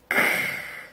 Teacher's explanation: 이 발음은요, 무성음이기 때문에 성대가 울리면 안 돼요. 목을 만져보세요. 크.